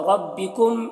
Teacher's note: ربکم میم میں اظہار شفوی ہو رہا ہے، اسے جلد پڑھیں گے جیسے ہم تم کی میم کو پڑھتے ہیں